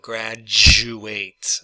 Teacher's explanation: because the U has the Y sound in it, that pretty much combines with the D to make some kind of a J sound